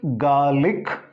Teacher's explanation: So here in Britain, garlic, this R is silent. But in America, that R is not silent, it is garlic.